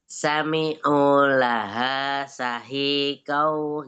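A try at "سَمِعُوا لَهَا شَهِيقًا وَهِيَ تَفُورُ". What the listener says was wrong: Tapi syahnya pakai shin yang tafasi. sami'u, iya pakai yang tipis. Sami'u laha syahiqaw wahiyata. Yang sami'unya pakai yang tipis. Kalau syahikonya pakai yang tafasi. Syah, naam.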